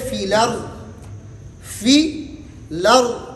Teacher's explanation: تو حمزہ کی حرکت کو نقل کر کے ماقبل کو دیتے ہیں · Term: نقل حرکت